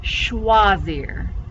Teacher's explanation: sh sound for ch when you pronounce it in french and then that oi is a wah always